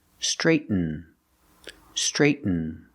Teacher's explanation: You make a stop T, that means you make the position of a T, but you don't release it. Straight, Then you fall to an N.